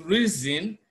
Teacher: even though we have S the s in reason is pronounced Z